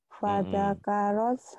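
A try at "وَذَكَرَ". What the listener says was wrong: Waza, bukan fada, waza, waza karos. Wada karos marobbihi fasolla.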